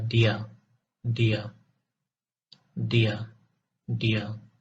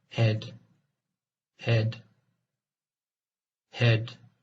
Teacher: the voiced alveolar stop is produced by placing the tip of the tongue on the alveolar ridge